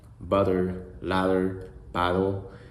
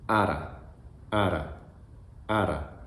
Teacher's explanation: Just think about the sound that you use for double T or double D. That's exactly the same sound as the tap R.